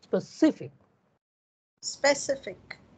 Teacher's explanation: out of these three syllables we stress the middle one